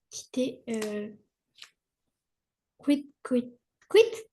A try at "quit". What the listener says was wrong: Ouais, c'est bien. T'as bien retenu.